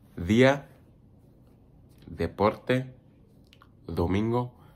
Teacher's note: the D, it's more like a TH, I feel like. A soft, it's more like a really, really soft D. Like the, your tongue is gonna be right behind your teeth.